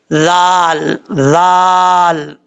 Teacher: ذال پڑھا جاتا ہے بغیر سیٹی کے